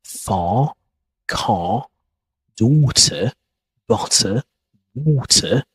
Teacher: We don't pronounce the letter R, particularly at the end of the words, words like far, car, daughter, butter, water. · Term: British accent